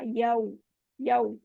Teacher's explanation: होंठ यहाँ पे बिल्कुल गोल हो जाएंगे। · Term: वाव लीन